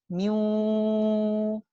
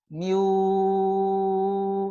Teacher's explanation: Miu, padahal makhrajnya sudah di waw. Miu, tapi sifat gunnah dari nun masih tersisa.